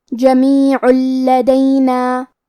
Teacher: کلمت جمیعن کے آخری میں عین پہ تنوین پیش ہے، پھر حرف اللام ہے کلمت لدینا. یہاں بھی حکم ہے ادغام بغیر غنہ، تو ہم یہ حکم کو بغیر غنہ سے لیکن تشدید کے ساتھ ادا کریں گے